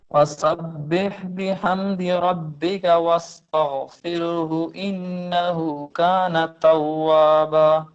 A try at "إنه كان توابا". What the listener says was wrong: انہو کو تھوڑا لمبا کریں گے، انہو، اور آگے توابا اس میں بھی تھوڑا لمبا کر کے ختم کریں گے. انہو کان توابا.